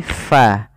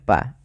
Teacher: Jaroyanun nafas, jaroyanu an-nafas. Mengalirnya nafas kita ketika melafalkannya, sehingga tidak dibaca dengan pa, tapi fa. Fa bukan pa. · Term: sifat hams